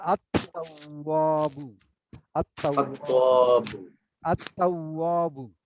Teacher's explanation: এখানে লামটা পড়তে পারছি না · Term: হুরফুস শামস